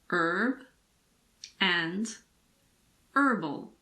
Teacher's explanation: in American English the H in the words herb and herbal also aren't pronounced